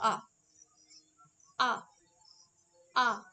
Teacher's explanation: আ উচ্চারণ করলে আমাদের মুখগহ্বর সব থেকে বেশি প্রসারিত হয় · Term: দীর্ঘ স্বরধ্বনি